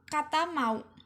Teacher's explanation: alat artikulasi yang digunakan pada bunyi konsonan m yaitu bibir bawah dan bibir atas sehingga menghasilkan bunyi bilabial